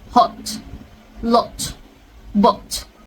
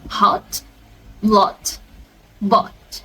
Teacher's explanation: it's going to be shorter and rounded up with British, but it's going to be longer and unrounded with American.